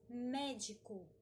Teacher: nós utilizamos médico como uma palavra proparoxítona, por ser a antepenúltima a mais forte.